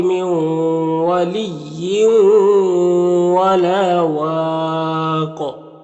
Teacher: قاف میں قلقلہ کریں گے، اور یہاں پر مد عارض وقفی ہوگا